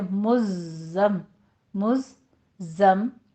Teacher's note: 2 بار زائ کی ادائیگی، پہلا ساکن دوسرا متحرک